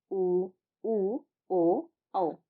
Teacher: अवता का स्वर वृताकार स्वर उन स्वरों को कहा जाता है जिनके उच्चारण में हमारे जो होठ होते हैं वह वृत के समान गोल हो जाते हैं